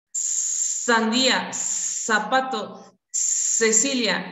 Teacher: Otras dentoalveolares, sordas continuas